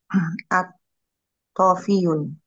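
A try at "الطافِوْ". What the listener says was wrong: View, wawunya sukun.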